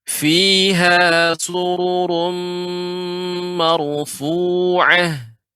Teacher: Ketika sururum di sini ada tanwin bertemu dengan mim, ini namanya idgham bil gunnah. Jadi gunnahnya itu harus lebih dipanjangkan.